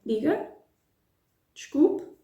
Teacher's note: using the imperative with the intonation of a question